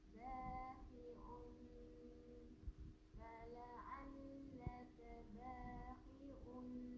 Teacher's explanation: Nun yang bersabdu kita baca dengan idgham lughah. Masukkan bunyi nun dalam bunyi nun.